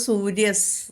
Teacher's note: സക്ക് മുമ്പ് വിസർഗം വന്നതുകൊണ്ട് സൂര്യസ് എന്ന് പറയണം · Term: വിസർഗ്ഗ സന്ധി